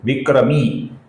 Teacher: इधर मी दीर्घ है तो उसका उसी दीर्घ तरीके से उच्चारण करना अभिप्रेत है।